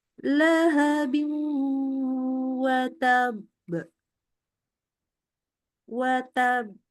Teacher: Watab. Pas masuk yang ba-nya, kita udah nggak boleh ngasih harokat. Sudah sukun. Maka di situ kita masukkan qalqalahnya.